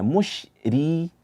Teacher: kemudian RI itu dibaca tipis